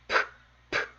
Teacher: 프 라는 소리는 입술이 공기를 막았다가 터뜨리면서 나는 소리입니다. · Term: 자음